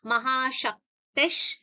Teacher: So after Mahashakti, you have Visarga followed by Shri, which will take the ish sound